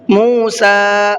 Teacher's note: سین کو کھینچ کر کے پڑھنا ہے اس لیے کہ اس پر کھڑا زبر ہے